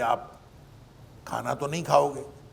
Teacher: اور زور نہیں پہ ہوتا ہے